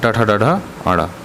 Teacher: मूर्धन्य व्यंजन वे होते हैं जिनका उच्चारण करते समय वायु मूर्धा से निकलती है, माने मुंह के ऊपरी भाग के अग्रभाग से।